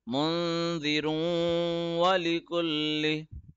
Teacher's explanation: you have to read it in your nose, idgham rule